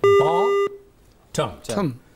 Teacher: Now, ba is actually short vowel, but it is stronger than a in term. Therefore, stress is on the first syllable because it is a noun.